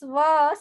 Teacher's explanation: when we pronounce va, we use upper teeth and lower lip.